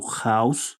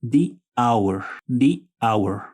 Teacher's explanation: este otro sustantivo House este Inicia con un sonido vocálico Our Aquí sí podemos notar que la H es muda